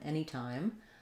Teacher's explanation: this letter A is going to be the eh sound, like in many or men, even though we spell it with A.